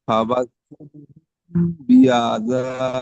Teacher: হচ্ছে এখানে, হ্যাঁ মিম সাকিনের পরে এখানে বা এসছে, তাই মিমকে এক আলিফ পরিমাণ গুণনা সহ পড়তে হবে, একে ইকফায়ে সাফাবি বলে।